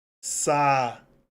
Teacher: Paroxítona, em que eu tenho como sílaba tônica uma sílaba em que há hiato.